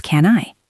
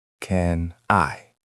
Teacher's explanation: Can ends in N. I is a vowel sound so it becomes can I. >> So the whole sentence can I come in sounds like can I come in?